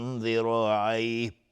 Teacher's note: تا از حروف استعلاء غلیظ تلفظ میشه، تنوین بعدش ذال اخفای حقیقی. را حکمش استعلاء چون فتحه داره و الف هم تابع را غلیظ تلفظ میشه، چون گفتیم الف همیشه تابع ما قبلشه.